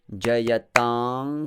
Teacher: I do not close my lips, it's an Anusvara.